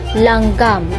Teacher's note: Ito ay ang hanging lumalabas ay sa gilid ng dila sapagkat ang dulong dila ay nakadiit sa punong gilagid. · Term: pagilid